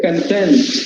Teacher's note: In adjective form, we say content. Second syllable is stressed.